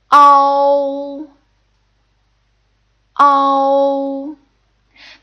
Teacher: The closest English equivalent would be like as in cow. However, O starts off more with an A sound and then you slowly close your mouth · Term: compound final